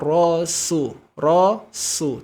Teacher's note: kalau tidak kita tarik rahangnya nanti huruf Sin ini akan berubah menjadi huruf Shad karena huruf Sin ada saudaranya huruf Sin tipis huruf Shad tebal